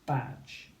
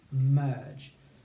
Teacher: the difference is the length of the vowel sound before that final jim sound